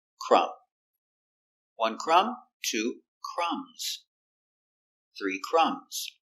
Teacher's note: The B is silent. You have MB at the end.